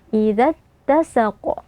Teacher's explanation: Kemudian di akhir ayat ini juga sama seperti akhir ayat sebelumnya, ada qaf yang kita sukunkan saat waqaf ya atau kita waqafkan. Maka berlaku hukum qalqalah kubra, qafnya kita beri pantulan yang agak kuat.